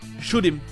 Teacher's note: Le H ne va pas se prononcer, on va faire la liaison.